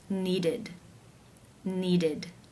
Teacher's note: it is case 3, where the ED is pronounced as the I as in sit with the D sound.